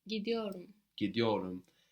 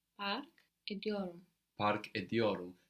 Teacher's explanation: So we saw these T's soften to D's because of the following vowels.